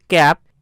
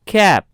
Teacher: ক এবং খ এর মিশ্রিত সাউন্ড, যেটি বিদেশিরা উচ্চারণ করে থাকে